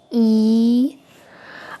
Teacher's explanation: because it is a long vowel, so you can expect it to be twice as long as the e in the word beep in English. So it's more like e.